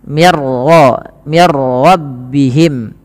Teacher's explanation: Ra tapi dibaca dengan bacaan am bila gunah yang di mana suara nunnya langsung dimasukkan kepada huruf ro dan ro dibaca dengan tebal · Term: idgham bila gunah, idgham bila gunnah